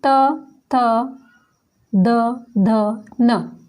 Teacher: इनके उच्चारण करते समय हमारा जो दांत है वो स्पर्श होते हैं जीभ से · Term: तवर्ग